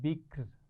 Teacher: آخر میں را کو ہم جب ساکن کریں گے تو اس کو باریک پڑھیں گے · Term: را کو باریک